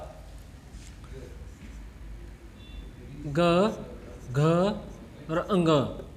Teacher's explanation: सघोष होता है जिन वर्णों का उच्चारण करते समय जो है मुख में कंपन पैदा होती है, उन्हें जो है हम अघोष सघोष स्वर बोलते हैं।